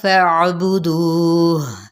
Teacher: عین کو وسط حلق سے ادا کریں گے · دو پہ مد اصلی بالواو کا قاعدہ ہو رہا ہے، ایک الف یا دو حرکات کے برابر